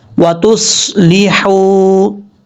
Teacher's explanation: تا کے بعد جو صاد ہے یہ صاد حروف مستعلیہ میں سے ہے، پر پڑھا جائے گا۔ وَتُصْلِحُوا، حا بریک ہے، اس کو کلیئر ساؤنڈ پڑھیں گے۔